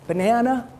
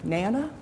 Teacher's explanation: given the structure of dominant structure of english which tends to start with stressed syllables we get these weak initial syllables dropped out